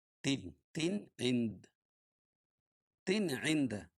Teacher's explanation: تنوین کے بعد حروف حلقی کے 6 حرفوں میں سے عین ہے، اس لیے اظہار حلقی ہوگا، اس کو ظاہر کر کے پڑھیں گے